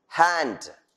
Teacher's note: The nasal resonator shuts up. The lung air is expelled with a considerable pressure. This causes friction. The mouth is held ready for the articulation of following vowels. · Is a voiceless glottal fricative.